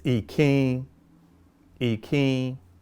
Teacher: we say in without touching the top of our mouth and we make it nasalized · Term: nasalized in